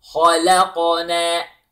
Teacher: the ha is heavy, the lam is light, the qaf is heavy with qalqala, and na, light.